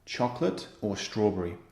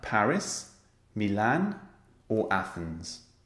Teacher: the intonation is rising and then falling